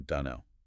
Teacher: That reduction of the vowel sound in don't and the dropping of the final t sound.